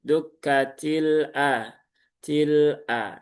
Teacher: Dia tawasud itu kan di pertengahan ya, pertengahan antara syiddah dengan rokhwah. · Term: lam sukun